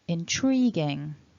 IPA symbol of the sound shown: ŋ